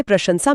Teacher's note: प्रशंसा में पहला श तालव्य है और आखिरी स दंत्य। इसे प्रशंसा लिखना गलत है।